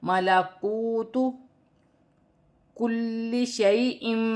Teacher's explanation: واو ساکن سے پہلے پیش ہے، واو مدہ بنے گی، 1 الف کی مقدار کھینچ کر پڑھا جائے گا، جیسے ملکوت کل شیء۔